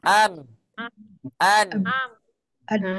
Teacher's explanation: Coba tutup hidungnya am an am an baik gimana sudah kerasa gunahnya berdengung · suara gunah itu ya muncul atas tabiat daripada huruf mim dan dan Nun